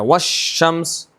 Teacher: ہے ادغام ہو جائے گا. یعنی کہ لام تعریف کو بالکل نہیں پڑھیں گے، مدغم بالکل نہیں پڑھا جائے گا. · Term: لام تعریف کا ادغام